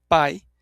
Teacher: o a é vogal mais forte e o i é a semivogal mais fraca